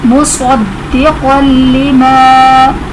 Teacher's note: صاد حرف مستعلیہ اس لیے پر پڑھیں گے، دال حرف قلقلہ جو کہ مشدد ہے اس لیے اس میں خوب جماؤں کے ساتھ ادائیگی کریں گے۔